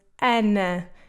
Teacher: it can be reduced, which is what happens in the word ana, especially in the last A, where sometimes you almost don't hear it.